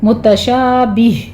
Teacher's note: متشابہاں وغیر متشابہ، یہاں پہ آپ نے متشابہ کے وقف نہیں کرنا ہے، جو آخر پر ہا کی ساؤنڈ ہے وہ لے کر آنی ہے